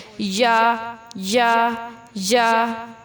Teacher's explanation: یا پڑھتے ہوئے تھوڑا سا اور زبان تالو سے جدا رہے گی